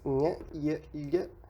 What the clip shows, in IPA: j, j̃ ɲ ʎ